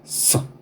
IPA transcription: s